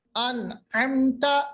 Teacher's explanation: اظہار کا مطلب ہوتا ہے ظاہر کرنا. میم کی آواز کو بالکل بھی ناک کے اندر نہیں لے جانا, کوئی غنہ نہیں کرنا, بالکل ظاہر کرنا · یعنی غنہ نہیں کرنا, بالکل بھی غنہ نہیں کرنا, اور جلدی سے میم کو ادا کرنا